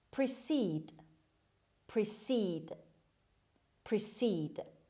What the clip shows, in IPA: prɪˈsiːd